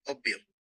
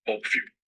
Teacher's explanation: Spanish also has just one O sound, like in the word go, but shorter. But Portuguese has an additional open O, which sounds like the O in pot.